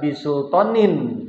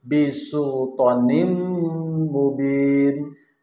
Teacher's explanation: Jadi tidak dibaca bisultonin, tapi bisultonim mubin. Jadi tanwinnya ini melebur ke dalam huruf mim